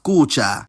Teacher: It ends with long a, and a lot of the time, a preceding short vowel inside the root will also become long. For example, the word for house is kuća, and its genitive plural form is spelled exactly the same, but it's pronounced kuće.